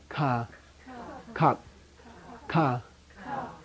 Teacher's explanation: strong and unaspirated I used to say high tone but it's not really a tone